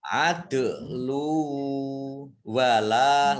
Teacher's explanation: Dal sukun bacaan qalqalah, dibaca memantul adu lu, ya. Kemudian lam dhammah tanwin bertemu dengan huruf wawu, idgham bi gunnah, wawunya dibaca double, ya